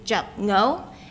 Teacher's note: the sound for 10 changed from a high tone to a low tone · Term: tone change